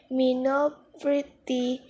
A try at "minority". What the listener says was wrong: The learner mispronounced the word minority and said minocrity.